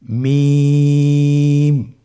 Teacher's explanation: মিম হরফটি উচ্চারণের ক্ষেত্রে অবশ্যই বারিক হবে, পাতলা হবে এবং তিন আলিফ টেনে উচ্চারণ করতে হবে।